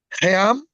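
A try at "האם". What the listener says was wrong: Almost perfect. Let's this ayin, it works just like the aleph, so you're gonna separate it with a little glottal stop. He'am.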